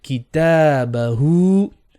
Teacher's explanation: So ta and hu, 2 beats.